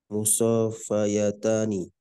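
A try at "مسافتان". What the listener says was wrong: Again, the alif stay. The alif stay. So just make it tani. So musafatani.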